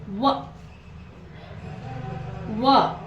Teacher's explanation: ಇಲ್ಲಿ ತುಟಿಗಳಿಗೆ ನಾವು ವ ಅನ್ನುವಾಗ ಸ್ವಲ್ಪ ದಂತ ಟಚ್ ಆಗ್ತೈತಿ ಇಲ್ಲಿ. ಅದಕ್ಕೆ ನಾವು ಈ ವ ಅಕ್ಷರವನ್ನ ಏನಂತ ಹೇಳಿ ಕರಿತೀವಿ ಅಂತಂದ್ರೆ ದಂತೋಷ್ಠ ಅಂತ ಹೇಳಿ ಕರಿತೀವಿ.